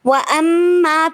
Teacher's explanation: وَأَمَّا پہ میم مشدد ہے تو میم مشدد پہ غنہ ہوگا